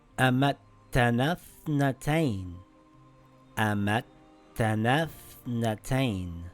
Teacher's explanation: Now we see a tha that has a sukoon, and before it is a long vowel. We drop the long vowel.